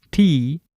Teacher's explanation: you said something like tea that is aspirated